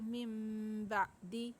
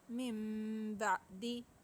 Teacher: نون ساکن جو ہے چھوٹی سی میم میں بدل جائے گا، تو ہم پڑھیں گے مم بعدی، ٹھیک ہے. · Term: اقلاب